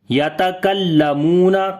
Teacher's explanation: یتکلمون، کاف کو باریک پڑھیں گے، لام کے اوپر آواز کو تھوڑا سخت کریں گے. میم کو لمبا کریں گے، واو مدہ ہے.